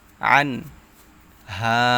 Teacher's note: নুন সাকিনের পর ইজহারের হরফ হা আসছে এখানে স্পষ্ট করে পড়তে হবে